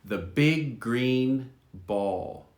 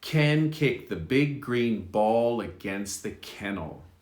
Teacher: you only really say g once